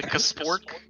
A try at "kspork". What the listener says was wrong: Well, no, the K is silent. It's K-S-P-O-R-K, but the K is silent.